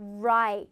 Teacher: 혀가 구부러졌다가 밖으로 뻗치면서 나가는 소리예요. 이렇게 구부러졌다가 이게 요로 샥 펴지면서 나가는 소리다라는 거.